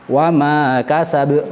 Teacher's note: Untuk lafadz kasab karena tidak bertasydid maka cukup qalqalah sughra saja.